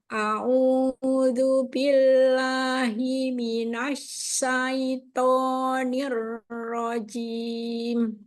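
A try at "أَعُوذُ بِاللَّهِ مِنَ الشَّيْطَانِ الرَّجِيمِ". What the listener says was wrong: Tebal ya, latihan lagi. Kalau nyebut na biasa tipis. Nash. Caranya ketika ke huruf shin, jangan perhatikan shinnya dulu. Perhatikan sin nunnya dulu. Mina. A'udzu billahi minasya. Jadi tidak minash.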